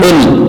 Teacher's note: قاف چونکہ حروف قلقلہ میں سے ہے، اس لیے ہم اس کو موٹا کر کے پڑھ رہے ہیں